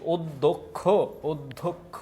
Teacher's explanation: আদ্য অটা ও এর মত উচ্চারণ হচ্ছে অধ্যক্ষ অধ্যক্ষ এ জায়গায় দ এর নিচে আর ক এর নিচে